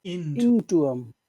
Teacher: you have to put all the emphasis on the word in on the sound in to go into them into into yeah